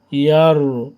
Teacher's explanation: র সেকেন্ড ডাইনে জবর পুর করে পড়ব, অর্থাৎ মুখটাকে ঠোঁটটাকে গোল করে উচ্চারণ করব।